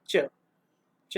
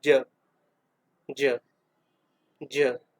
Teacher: जब आप बोलेंगे ना तो ऑटोमेटिकली आपको फील होएगा कि हाँ हमारे गले में कुछ कंपन उत्पन्न हो रहा है